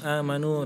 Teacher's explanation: Jadi mat itu dua ketukan atau 2 harokat itu diperhatikan.